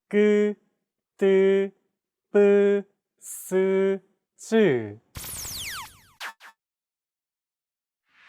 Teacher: Tense consonants, also known as double consonants, are pronounced with a stiffer voice. More pressure is built up and it's released much more quickly than plain sounds.